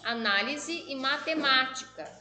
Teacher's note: proparoxítona a sílaba tônica é a antepenúltima como análise e matemática